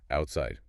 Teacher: the stop happens right before the S